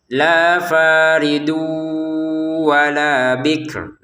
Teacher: Ternyata di depannya ada wawu, maka tak lagi dibaca faridun tapi masukin tanwinnya ke wau sehingga terbacanya faridu dengan dengungan ya.